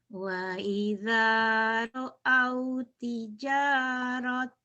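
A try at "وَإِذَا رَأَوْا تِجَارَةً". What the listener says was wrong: Wa idza ra'au tijarah. Iya, jadi tamar butoh ya, tamar butoh berubah jadi ha. Wa idza ra'au tijarah.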